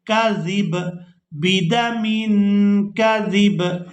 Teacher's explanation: زال کو با ساکن کے ساتھ ملا کر ادا کریں گے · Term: با کو ساکن